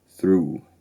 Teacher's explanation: The through vowel is slightly fronted, so instead of being oo, it's oo, through.